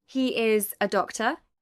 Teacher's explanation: a rising tone can also express doubt.